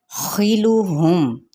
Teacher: خا کی زیر کو لمبا نہیں کریں گے، میم پہ اظہار شفوی ہے۔